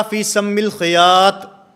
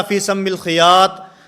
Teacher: اس میں مخرج کی غلطی تھی کہ وہ تو کو تا پڑھ رہے تھے